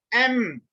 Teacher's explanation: When you close your lip, the air comes out from nose. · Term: nasal